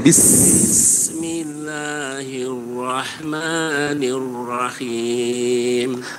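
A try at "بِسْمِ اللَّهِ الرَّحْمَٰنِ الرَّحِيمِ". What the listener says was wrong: Oke, berikutnya haknya sedikit kurang mengalir. Oke, nggak apa-apa, jadi catatan dulu saja ya huruf haknya.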